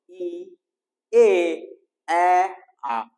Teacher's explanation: এগুলো উচ্চারণ করার সময় দেখো আমাদের ঠোঁট দুটা দুই দিকে প্রসারিত হয়ে যায় এই প্রসারণকেই বলছে প্রস্থৃত স্বরধ্বনি অর্থাৎ স্বরধ্বনি উচ্চারণের সময় যখন আমাদের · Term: প্রশৃত স্বরধ্বনি